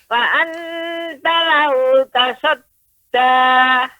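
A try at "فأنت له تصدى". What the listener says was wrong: Nah, ini juga Ibu perhatikan, nun sukun ketemu dengan ta juga ikhfa. Jadi nggak boleh pengucapannya fa'anta, itu lengket terus. Lidah lengket ke langit-langit. Nah ini kurang tepat. Yang benar ikhfa. Fa'anta, tidak ditempelkan ke langit-langit atas. Fa'anta. Baru ketika mengucapkan ta baru lengket.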